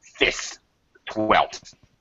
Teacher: So most native speakers will not pronounce that F sound.